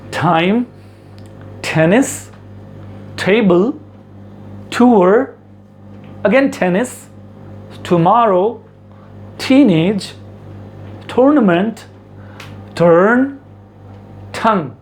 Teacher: टी को हम लोग ट के रूप में नहीं, बल्कि टी को हम लोग ठ के रूप में बोलेंगे। आप ज़ुबान को आप देख सकते हैं, नीचे के तालु को ऊपर से टच कराएं और अपने आप ठ साउंड निकलेगा।